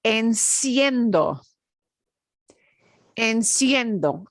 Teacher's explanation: you pronounce both vowels they're pronounced quickly together one running right into the other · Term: diphthong